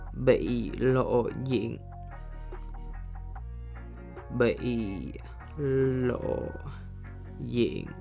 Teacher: you have to lower down your voice that produces a short bass effect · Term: underdot